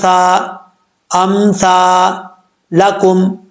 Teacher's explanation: जुबान की नोक ऊपर वाले दांतो के निचले हिस्से से लगे तो ये सा पढ़ जाता है बगैर सीटी के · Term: बगैर सीटी वाला